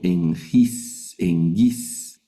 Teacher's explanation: si hay dos gamas juntas, la primera gama va a sonar como N y la segunda gama va a sonar como G